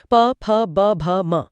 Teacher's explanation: इसमें दोनों होठ एक दूसरे को छूते हैं। यह पूरा क्रम गले से होठों तक का है। · और आखिर में प वर्ग उच्चारण स्थान ओष्ठ, प फ ब भ म। इसमें दोनों होंठ एक दूसरे को छूते हैं।